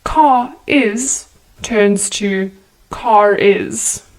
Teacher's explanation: is turns to car is the r sound is inserted now this is only relevant for uk based accents where the r sound isn't pronounced at the end of words like car